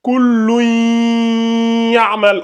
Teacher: Lorsque nous avons le tanwin qui rencontre la lettre ya, on fait ce qu'on appelle le idram avec la runna. Ici, au lieu de lire kullun ya'malu, ça va donner kullun ya'mal.